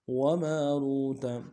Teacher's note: وماروت میں میم کے ساتھ الف مدہ ایک انداز میں کھینچیں گے، را کو موٹا کرتے واو کے ساتھ ملائیں گے، واو مدہ ایک انداز میں کھینچیں گے، تا کو نرم سے ادا کریں گے.